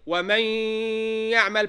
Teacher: You go straight into the ya, and it's a type of idgham with or without ghunnah. With, so you have to give ghunnah.